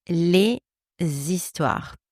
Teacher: I connect the final consonant of the word les with the first vowel sound of the word histoire, the sound I. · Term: liaison